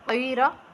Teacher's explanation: را کو پر کریں، قاف کو بھی